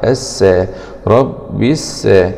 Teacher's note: لام سكون شمسية مدغمة في السين المشددة مع الفتح